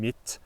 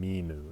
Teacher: you get a short I in mit, but you get a long I in minu